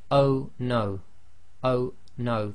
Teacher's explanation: If you say oh no, oh no, the O suddenly stops and there's a slight blocking. That's the what we say in English is a glottal stop.